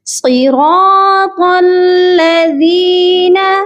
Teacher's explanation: صاد کو بھی موٹا، را کو بھی اور طا کو بھی موٹا یعنی ہیوی پڑھا جائے گا۔